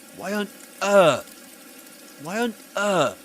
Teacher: He makes a pause, and the pause can be felt to be produced in his throat. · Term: glottal reinforcement